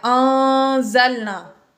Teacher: نون ساکن کے بعد زا آ گیا، اس لیے ہم نے یہاں پر غنہ کیا۔